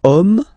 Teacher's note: as in French, H is not pronounced, so the first sound that we hear is O